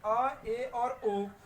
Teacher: आ का केवल कंठ है, ए का जो है वो कंठ तालु है, और ओ का जो उच्चारण स्थान है वो कंठोष्ठ है।